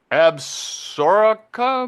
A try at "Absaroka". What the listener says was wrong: Yeah, it looks like Absaroka, but they say it Absorka. That's how pronounce it. Absorka